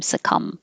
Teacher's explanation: the b is silent so just close your lips for the m